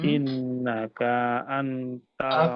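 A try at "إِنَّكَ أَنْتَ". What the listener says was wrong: K-nya pendek.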